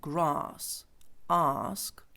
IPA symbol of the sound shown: ɑ: